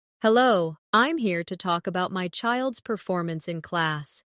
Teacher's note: Stress performance, so it's clear what you're discussing.